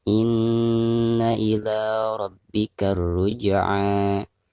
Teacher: Maka cara membacanya itu harus ditekankan disertai dengan gunnah. Ila dipanjangkan 2 harokat karena dihukumi mad tabi'i